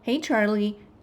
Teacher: The rising intonation signals the listener, hey, I'm not done yet.